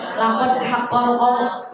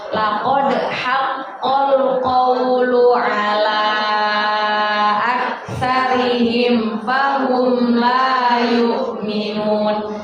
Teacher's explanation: di situ kita ketemu dal disukun. Berarti itu termasuk bacaan qalqalah. Kalau qalqalah harus kita pantulkan.